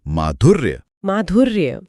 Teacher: और अंत में जो र है उसे य के कारण पूरा बोलने का समय नहीं मिलता तो वो आधा हो जाता है, तो शब्द बनता है माधुर्य।